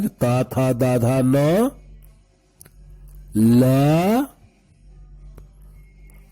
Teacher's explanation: ल और दंत स का उच्चारण दांत से होता है